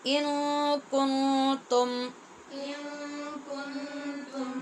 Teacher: دونوں نون پہ اخفا ہے غنے کے ساتھ